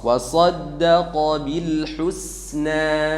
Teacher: Jadi maju kemudian langsung dimundurkan al husna sehingga sin di situ tipis karena sin sifatnya tipis bukan tebal